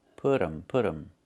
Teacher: It's put them. We make a reduction. We say put 'em. The T changes to a fast D. Put 'em, put 'em.